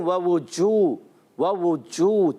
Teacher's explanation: जीम को वस्ते ज़बान, वस्ते तालू, ज़बान के दरमियानी हिस्से से और तालू के दरमियानी हिस्से से अदा करते हैं।